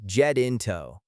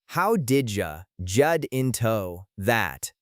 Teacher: Did you often blends together to sound like did ya, and get into links smoothly to sound like jatinto. In American English, that T in get sounds like a very quick, soft D sound